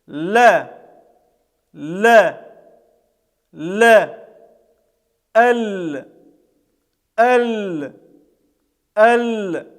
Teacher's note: это звук является щелевым является мягким это самая мягкая буква арабского алфавита · Буква Лям произносится, когда правый или левый кончик языка мы прислоняем к верхнему небу. Вслед за передними зубами есть небольшой бугорок на верхнем небе. · Так вот, не в центр его, а чуть слева или чуть справа мы прислоняем язык, и таким образом образуется этот звук, звук буквы Лям. Этот звук является щелевым, является мягким. Это самая мягкая буква арабского алфавита.